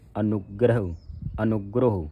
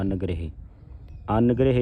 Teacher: ਨਨੇ ਦੇ ਉੱਤੇ ਅਧਕ ਪਵੇਗਾ ਫਿਰ ਕਸ ਕੇ ਉਚਾਰਨ ਹੋਵੇਗਾ